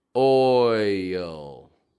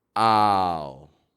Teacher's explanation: if you're not getting a full movement when you're going oi then it's most likely going to get confused with the sound ah